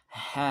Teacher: Hanya bersih, letaknya di tengah tenggorokan sama dengan huruf a ya. Ha, lepaskan anginnya, bersih.